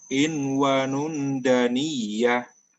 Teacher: Ini harus dengan dengung sebelum huruf dal.